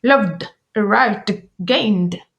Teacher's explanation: Je prononcerai le ed d lorsque le verbe se termine par un son voisé et que mes cordes vocales vibrent